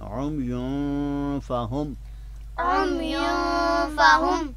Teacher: جو 15 حروف میں نے جو ہے وہ بیان کیے تھے، تو ان 15 حروف میں سے یہ حرف فا آ رہا ہے، تو لہٰذا یہاں پہ لفظ عمیٌ کی یا کی جو پیش والی تنوین ہے یہاں پہ ہم غنہ کے ساتھ اس کو پڑھیں گے۔